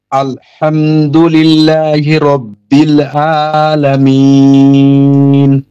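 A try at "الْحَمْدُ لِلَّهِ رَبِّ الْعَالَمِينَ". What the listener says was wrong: ঠিক আছে, কিন্তু আইন উচ্চারণটা আইন, আইন কণ্ঠনালীর মধ্য থেকে উচ্চারণ হবে আ আ।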